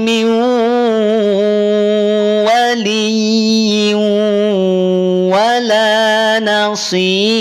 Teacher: Ra dibaca tipis karena sebelumnya ada tanda kasrah.